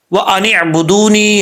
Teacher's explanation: یہاں پر عین جو ہے کلیئر کرنا ہے, حمزہ نہیں پڑھنا